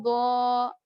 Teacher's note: हुरूफ मुस्तालिया के पास जब हुरूफ मद्दा होगा, अलिफ मद्दा होगा तो उस अलिफ को मोटा पढ़ेंगे।